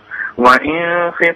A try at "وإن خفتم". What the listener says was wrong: لا وإن خفتم على طول. أقول لك على حاجة، صلى على النبي، أي نون عليها علامة السكون يبقى ما تعملش غنة طويلة. عليها رأس الحاء دي.